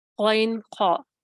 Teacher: ادنا حلق سے ہم جانتے ہیں کہ غین اور خا ادا ہوتی ہے